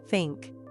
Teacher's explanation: When you say think, your tongue needs to gently come between your teeth, just for a moment. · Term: TH sound